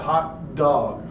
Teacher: the release isn't necessary. We don't have to release it.